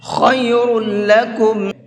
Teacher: خا کو منہ بھر کے پڑھیں گے اور را کو بھی منہ بھر کے پڑھیں گے